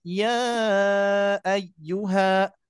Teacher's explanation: Ini kan ada mad 2 harokat ya. Mad 2 harokat bertemu dengan alif berharokat, maka jadi panjang. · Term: mad jaiz munfasil